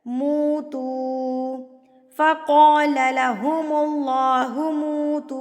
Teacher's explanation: اللہ سے پہلے اگر آپ کے پاس پیش آ جائے تو اللہ کو پر یعنی کہ موٹا کر کے پڑھا جاتا ہے